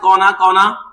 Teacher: যেখানে মূর্ধন্য দেখবে সেখানে দন্তান্ন হয়ে যাবে। মূর্ধন্যের ব্যবহার উচ্চারণের সময় বাংলা ভাষায় নেই, সেটা আমরা দন্তান্ন উচ্চারণ করি।